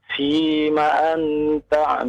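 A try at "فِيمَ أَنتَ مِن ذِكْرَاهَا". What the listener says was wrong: Jangan an ya. Karena ini nun bertemu dengan ta ya. Maka menjadi ikhfa, samar bunyinya ya antara nun dengan ta. Fima anta min zikraha.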